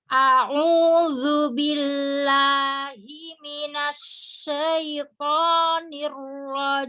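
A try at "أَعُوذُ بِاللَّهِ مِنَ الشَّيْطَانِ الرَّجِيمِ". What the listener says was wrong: Billah itu lamnya tawasud. Jadi jangan terburu-buru, tawasudkan dulu. Billah. Roknya juga rok sukun, rok tasdid itu kan roknya yang pertama sukun. Nirrojim sama roknya sukunnya tawasudnya tonjolkan dulu. Jadi tahu kan, mau ditawasudkan dulu, baru difathahkan.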